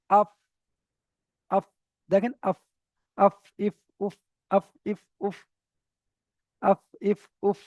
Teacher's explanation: সামনের উপরের দুটো দাঁতের আগা নিচের ঠোটের ভিজ অংশ লাগবে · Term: ফায়ের মাখরাজ